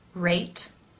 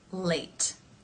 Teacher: notice in the r sound for rate that the lips are more rounded in the L Sound the tip of the tongue is up · in the L Sound the tip of the tongue is up against the roof of the mouth behind the front teeth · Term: r and the L